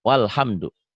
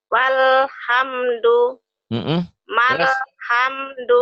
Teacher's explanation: Ini namanya hamzah wasol. Hamzah ini kalau diwasol, kalau disambung, disambung, tidak dibaca.